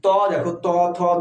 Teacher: যখন আমরা উচ্চারণ করছি তখন দাতের সঙ্গে একটা ধাক্কা লাগছে এজন্য এটা দন্ত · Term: দন্ত বর্ণ